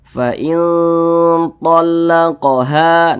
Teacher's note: Kemudian didengungkan. Nah, didengungkan itu suaranya itu kita tahan, kita panjangkan sejenak